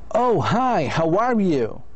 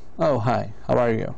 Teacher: when a person likes another person and wants to be friendly the voices usually goes up